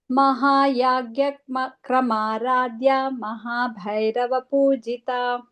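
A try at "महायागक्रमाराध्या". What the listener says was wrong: Yeah, it's not Agya, but it is Mahayaga, just like that what is that Yagam we do, right?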